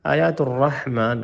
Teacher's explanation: را موٹا، حا پہ حلق پہ زور دیں